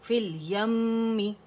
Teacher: نون میں اور میم میں اکمل گریڈ کا غنہ ہوگا